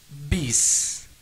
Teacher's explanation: Then it takes initial sound of the letter of sin, read S. So both letters should be read with strong mahmus or hams, that is whispering sound. B and S, pronounced as bis.